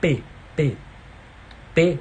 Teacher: Tetê é oral se eu fechar o nariz não vai mudar nada